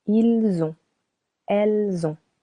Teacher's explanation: we link the usual silent S to the verb avoir conjugated